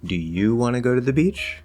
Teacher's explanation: a question like a yes or no question where we rise at the end